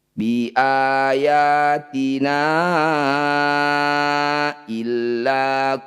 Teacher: na yang bertanda layar panjangkan 5 harokat atau 5 ketukan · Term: mad jaiz munfasil